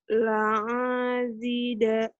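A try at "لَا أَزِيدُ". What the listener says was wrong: Coba lihat lagi yang panjangnya yang mana, Bener, la-nya bener. Cuman panjang pendeknya yang salah. A-nya pendek. La A bukan la A.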